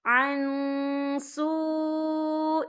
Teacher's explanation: اور آگے دیکھیں سو، یہاں پہ واو مدہ بھی ہو رہا ہے، واو ساکن ہے، واو ساکن سے پہلے پیش ہے اور اس پر مد بھی ہے، یہ مد جو ہے مد متصل ہے، اس کی مقدار 4 حرکت کے برابر ہے، تو ہم یہاں 4 حرکت کے برابر کھینچ کے پڑھیں گے۔